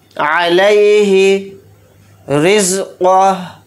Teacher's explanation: रॉ के नीचे यहाँ पर ज़ेर है, रॉ को यहाँ पर बारीक पढ़ेंगे। क़ाफ़ को यहाँ पर मोटा यानी पुर पढ़ेंगे।